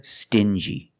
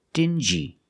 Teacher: These two words have the regular n Sound plus the J like juice together